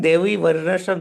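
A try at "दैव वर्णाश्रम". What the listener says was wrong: It is not Daivi, Prabhu, it is Daiva. Varnash. Daiva Varnashrama.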